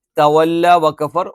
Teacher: വാവ് ചുണ്ട് വൃത്താകൃതിയിൽ വെച്ചുകൊണ്ട് ഉച്ചരിക്കണം അല്ലാതെ മേലെ മുൻപല്ലിന്റെ താഴെഭാഗം താഴെ ചുണ്ടിന്റെ പള്ളിയിൽ വെച്ചിട്ട് ഫാന്റെ ഉച്ചാരണ സ്ഥാനത്തുനിന്ന്